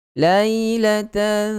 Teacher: Sebab huruf tha, apabila kita nak sebut huruf tha, kita kena keluarkan lidah. Bermakna masa kita dengung tu, kita punya lidah dah standby sentuh pada 2 gigi kacip bahagian hadapan kan. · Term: ikhfa hakiki